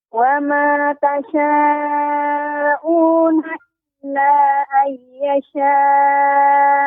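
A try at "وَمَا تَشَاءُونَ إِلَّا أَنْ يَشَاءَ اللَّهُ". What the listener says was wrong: Illa kurang panjang Ummu. Illa ayyasha Allah. Maka di sini ada banyak mat ya, maka dipersiapkan nafasnya, ditarik dulu panjang sehingga bisa cukup membacanya.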